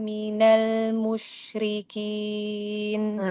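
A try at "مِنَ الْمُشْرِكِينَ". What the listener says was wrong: jangan monyong kalau sukun itu enggak boleh monyong yang boleh monyong cuman wau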